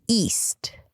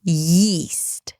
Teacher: And then there is a glottal stop at the beginning, usually east. And here, yeast.